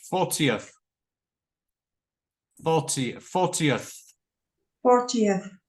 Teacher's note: 40th has three syllables and the stress is on the first syllable